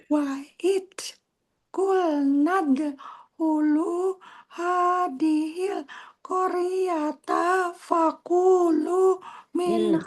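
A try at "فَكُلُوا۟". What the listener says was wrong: Fakulu. Kunya pendek. Fakulu.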